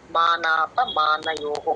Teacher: నా క్లియర్ గా ఉండాలండి అణ లాగా పలకకూడదు